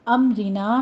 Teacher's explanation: امرنا میں میم ساکن کا قاعدہ اظہار شفی ہے، آگے رو مرقق پڑھی جائے گی